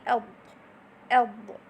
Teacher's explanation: The tip of the tongue is adhering with the roof of the mouth. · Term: itbaq